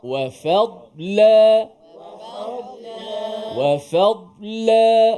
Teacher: Fa tu dinipiskan. Dot itu ditebalkan dan tanpa qalqalah.